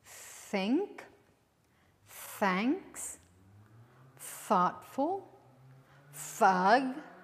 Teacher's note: you bite your tongue a little and then you hear a little hiss